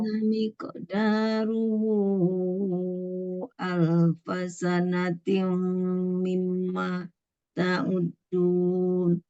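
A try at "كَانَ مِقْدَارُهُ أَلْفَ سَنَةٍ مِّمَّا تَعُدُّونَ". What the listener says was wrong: tim dengan mim dengung tuh. Ibu bisa kana miqdaruhu alfasanatim mimma ta'uddun. Nah, itu gunahnya tuh mulai dari tim terus mim dua dua dua posisi ya, dua tempat yang mesti gunahnya dijaga.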